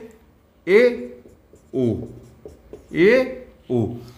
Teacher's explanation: अर्ध संवृत वह वर्ण होते हैं जिनके उच्चारण में मुख का जो भाग है वो संवृत से थोड़ा सा अधिक खुलता है